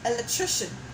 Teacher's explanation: Electrician has the last vowel as IA. So the A there is murmured.